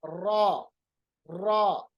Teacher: रा अदा करते वक्त थोड़ी सी जबान में कपकपाहट, लरजराहट पैदा होती है। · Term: तकरार